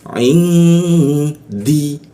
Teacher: didengungkan ditahan dua ketukan dengungnya di huruf dal. Jadinya in ya di ya di huruf dalnya in di seperti itu.